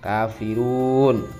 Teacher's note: contohnya Kafirun itu dua ketukan namanya Mad Thobi'i